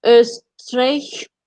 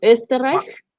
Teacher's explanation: Entonces, la clave que siempre les doy es, pongan los labios como si fuesen a pronunciar una O, pero cuando lancen el aire, pues, pronuncian una E. E, Eh, ese es el sonido. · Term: la O umlaut